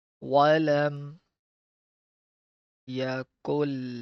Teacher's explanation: Walam Yakullahu. Skip the noon because noon is sakin and the next letter is mushaddad. So we'll skip this noon because it's a sakin letter.